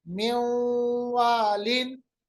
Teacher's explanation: इसी तरह है मेवालिन, मिन वालिन के बजाय मेवालिन, क्योंकि हमने नून साकिन को वाव के साथ मिलाया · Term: इदगाम